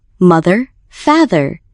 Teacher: stress the first syllable